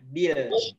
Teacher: Ditipiskan huruf lamnya, huruf ba-nya disempurnakan kasrahnya.